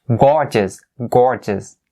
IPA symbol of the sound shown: ɔːr